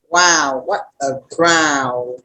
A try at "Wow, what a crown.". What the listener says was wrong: Don't forget your N. Crown. The last sound you make comes out of your nose. Crown.